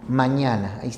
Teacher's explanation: si se cierra el velo por donde va el aire el aire sale por la nariz así que estos picos se denominan nasales mañana tienes mn n